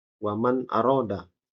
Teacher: Dibaca waman karena ada nun mati bertemu dengan hamzah, ya, atau alif, dibaca waman aroda, ya, jelas. Bukan dibaca samar juga wamang, salah. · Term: izhar